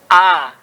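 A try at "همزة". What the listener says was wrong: Kok A? A itu kan berharokat.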